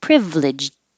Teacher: while i'm making my v my tongue is going up for the l at the same time